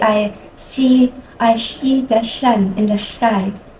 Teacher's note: a lateral lisp on an S would sound like this. It's very wet, slushy sound.